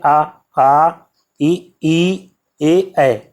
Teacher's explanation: इनको बोलते समय आपका जो होंठ है वो गोलाकार नहीं बनता है, तो इसलिए जो है इनको क्या कहते हैं, आवृतमुखी कहते हैं।